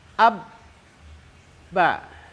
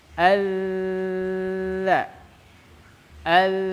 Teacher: Kalau ba gak bisa, ab, mentok. Itulah syiddah.